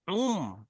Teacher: যে নুন উচ্চারণ হচ্ছিল, নুনটা বাদ গিয়ে মিম উচ্চারণ করবেন, ঠিক আছে, যখন বাটা পড়বেন।